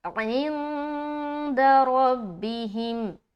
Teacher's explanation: یہاں پر پھر اخفا کر رہے کیونکہ نون ساکن کے بعد حرف دال ہے